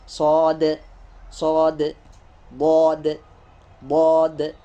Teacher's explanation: Dal yang sukun nanti masuk kepada huruf qalqalah ya. Maka cara bacanya, cara pengucapannya itu harus dipantulkan.